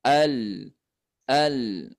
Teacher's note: makhrajnya lam ini di ujung lidah ujung lidah kita ditempelkan ke langit-langit belakang pangkal gigi Al Al nah ketika terangkat disimpangkan disimpangkan lidahnya ke samping nah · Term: inhirf